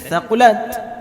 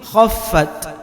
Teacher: Kalau thaqulat tadi tha-nya tipis, di sini kha tebal. Huruf kha itu diantara huruf yang dibaca tebal.